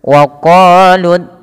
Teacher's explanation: Kenapa di sini lam tebal karena dia huruf lam yang didahului dengan huruf fathah · Pada lafal Allah yaitu lafzul jalalah di sini perlu ditebalkan lamnya, tapi jangan menebalkan zalnya. Tidak dibaca wa qalu takhadzallahu, tapi za tipis baru Allahnya tebal.